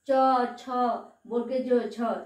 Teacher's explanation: জিহা আমাদের তালুকে স্পর্শ করে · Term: তালব্য বর্ণ